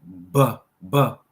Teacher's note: B is a plosive, vibrating labial lip sound